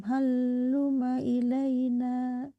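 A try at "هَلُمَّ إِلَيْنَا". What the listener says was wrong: Halum bukan haluma, tapi yang tasdidnya mim. Halumma ilaina. Halumnya tidak tasdid, yang tasdid itu mim. Halum bukan halum. Halum.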